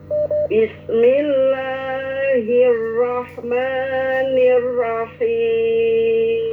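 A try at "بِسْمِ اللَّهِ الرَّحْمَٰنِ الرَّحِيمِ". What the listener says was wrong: Kurang kuat getarannya ya.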